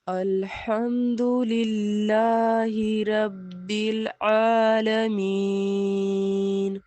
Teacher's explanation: یا مدہ کی وجہ سے ہم نے یا کو کھینچا ہے الف کی مقدار میں